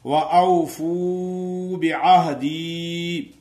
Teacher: وَأَوْفُوا بِعَہْدِي، کچھ لوگ ایسے پڑھتے ہیں وَأَوْفُوا بِعَہْدِي اوفی بِعَہْدِكُمْ، وَأَوْفُوا وہ نہیں پڑھتے، لیکن فو کو تھوڑا سا لمبا کریں گے کیونکہ وہ مدہ ادا ہو جائے گی